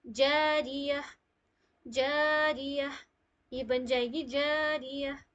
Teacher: गोल वाली जो ता होती है वो कन्वर्ट हो जाती है हा में, ठीक है। जहां पे भी आप लोगों को स्टॉपिंग से पहले गोल वाली ता नजर आएगी तो वो कन्वर्ट हो जाएगी हाँ में, जैसे जारिया, जारिया, ये बन जाएगी जारिया, ठीक है।